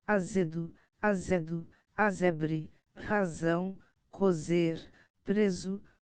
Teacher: as sílabas em que a sibilante é dental branda em todo o país